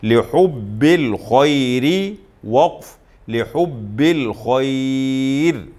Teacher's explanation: اگر وصل میں پڑھیں گے تو را کو باریک پڑھیں گے اس لیے کہ را کے نیچے زیر ہے، اور وقف کریں گے تو تب بھی را کو باریک پڑھیں گے اس لیے کہ یہ اصول ہم نے پڑھا تھا کہ اگر را ساکن ہو اور اس سے پہلے یا ساکن آ جائے تو ہر حال میں را کو باریک پڑھتے.